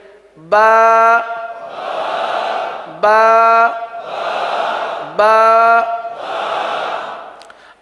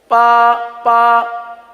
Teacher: बा होठों के दोनों होठों के तर हिस्से से अदा होता है